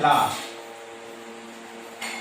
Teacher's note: और पार्श्विक व्यंजन वो व्यंजन होते हैं जो जिह्वा के दांत और तालु पे लगने से अगल बगल से जो वायु होती है वो निकल जाती है, उसे पार्श्विक व्यंजन कहते हैं।